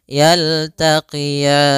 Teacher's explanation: ada bacaan lin, yaitu adanya fathah bertemu dengan ya sukun, lembut dalam pelafalannya.